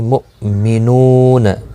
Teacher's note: مؤمنون حمزہ ساکن کو تھوڑا جھٹکی کے ساتھ ادا کریں گے. نو واو مدہ ہے، ایک الف کی مقدار کے برابر کھینچ کر پڑھیں گے.